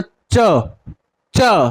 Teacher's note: जीभ हमारी कहां जा रही है, ऊपर की तरफ, तालू पर। जीभ कहां लपलप आ रही है हमारी, ऊपर।